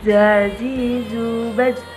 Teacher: ujung lisan kita hampir di atas dua gigi seri bagian bawah diucapkan dengan mengalir suara tanpa diiringi mengalirnya udara